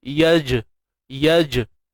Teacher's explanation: jim ni dia lantun. Dia bermula daripada makhraj dia sendiri dan dia bukan melantun kepada bunyi yang lain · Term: qalqalah